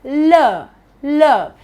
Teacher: It touches the alveolar ridge and falls back. That's where the sound is produced in my mouth. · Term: l sound